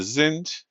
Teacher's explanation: remember we're pronouncing these d's if they show up at the end of the word. They get pronounced like a t.